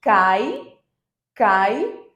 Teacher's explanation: esse cai onde eu tenho uma vogal e uma semivogal juntas jamais você vai encontrar duas vogais na mesma sílaba Ok gente